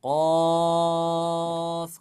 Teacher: ketika di Quran surah qf itu dia dibaca qofnya panjang qof Karena apa Mad Thobi'i bertemu dengan sukunsukun asli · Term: mad lazim